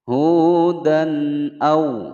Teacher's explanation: ada fathatain bertemu dengan hamzah. Hukum bacaan idhar, dibaca dengan jelas, tidak boleh dipantulkan